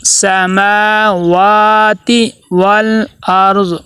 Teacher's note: میم کے اوپر کھڑا زبر ہے، واو کے اوپر کھڑا زبر ہے، دونوں کو ایک الف کے برابر لمبا کریں گے